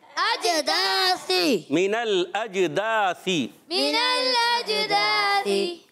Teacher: और अज हमज़ा को जीम से मिलाना है, जीम साकिन है, उर्फ़ कलकला में से। कुतुब जद्दिन में जीम भी है, तो उर्फ़ कलकला में से आवाज़ लौट कर आएगी